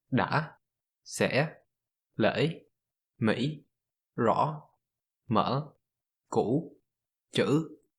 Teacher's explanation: With dấu ngã, the sound is shorter, almost staccato-like. It drops down quickly to a low pitch before rising sharply. Because of how fast the pitch transitions, it produces an obvious inflection, making it sound like 2 syllables.